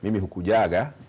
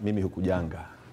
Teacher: the prenasalization of that ga is now almost standard. So most people will not simply say mimi hukujaga, but mimi hukujanga.